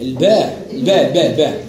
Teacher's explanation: حرف الباء من الشفة العليا مع الشفة السفلى في وسطها